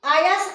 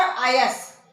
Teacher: पहले आयस में जिसमें आपका तालव्य सा रहेगा और दूसरे में रहेगा दंत सा।